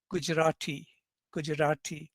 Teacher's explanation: not a strong retroflex it's kind of post alveolar